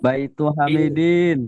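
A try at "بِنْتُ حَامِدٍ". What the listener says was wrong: Bintu. Bintu bukan baiti itu bintu. Hamid. Hamidin.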